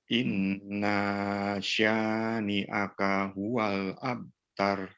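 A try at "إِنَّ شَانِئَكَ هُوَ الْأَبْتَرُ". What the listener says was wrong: Sebentar, ulangi lagi. Inna nunnya ditahan lebih lama dan berikan kolkolah pada ba abtar.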